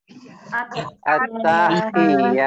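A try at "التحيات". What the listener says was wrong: Rasa agak kepanjangan. Rasa agak kepanjangan di taknya. Perhatikan sekali lagi, taknya tidak ada penanda panjangnya.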